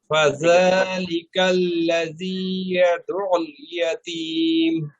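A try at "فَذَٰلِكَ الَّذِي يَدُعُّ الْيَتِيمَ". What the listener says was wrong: এটাও শক্ত হয়ে যাচ্ছে। ফাযালিকাল্লাযী,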